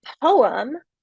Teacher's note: So, for example, poem, we put the stress, the emphasis on the first syllable in that two-syllable word